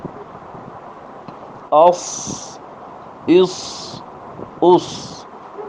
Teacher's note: صفت صفیر کی وجہ سے اس میں سیٹی کی سی آواز آ رہی ہے